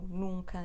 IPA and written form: nũkɐ (nunca)